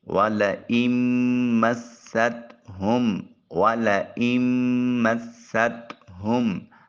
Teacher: حمزہ کو میم سے ملائیں گے، وَلَئِن مَّسَّتْ، میم کو سین سے ملائیں گے اور سین کو تا کے ساتھ۔ اچھا، تا کو باریک ادا کریں گے، طا کر کے نہیں پڑھیں گے · ہاں کو اقصی حلق سے ادا کریں گے اور میم کے سکون کو کامل ادا کریں گے